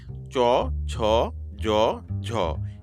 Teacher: আগবা >> এরপরে আমাদের জিহ্বাটা আরেকটু সামনের দিকে এগিয়ে আসবে। চ ছ জ ঝ এগুলো বলার সময় আমাদের জিহ্বাটা চ্যাপটা হয়ে শক্ত তালুর সাথে মিশে যাচ্ছে। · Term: তালব্য বর্ণ